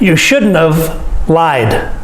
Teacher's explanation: I don't say have, I say of.